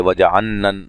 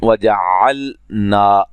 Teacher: वजअल, यहाँ तवज्जो के साथ बात को याद रखें, यहाँ भी जहाँ लाम और नून इकट्ठे आ रहे हैं, लाम साकिन है, तो यहाँ लाम को बड़े वाज़े निकालना है, लाम नून की तरह ना हो जाए